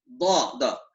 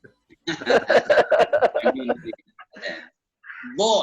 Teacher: Nah, Jami'ul Qurra, para ulama-ulama qiraat akhirnya menetapkan huruf dad itu yang makhrajnya dari hafatil lisan, dari pinggir lidah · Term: makhraj dad